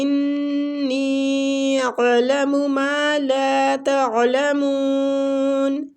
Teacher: انی اعلم ما لا تعلمون، انی میں جو مد ہو رہی ہے نا، یہ مد جائز منفصل ہو رہی ہے. انی پہلے غنہ کریں گے، اس کے بعد مد کو کھینچیں گے، مد کی مقدار 3 سے 4 الف ہے